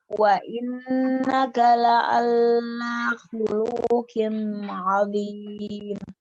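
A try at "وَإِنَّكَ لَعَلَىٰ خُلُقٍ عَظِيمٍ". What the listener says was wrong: Lamnya tidak ada tasydid. Wa innaka la'ala khuluqin 'adzim. Nah, itu yang salahnya. Salahnya la'alla, jangan la'alla. Wa innaka la'ala. La'ala, jangan la'alla.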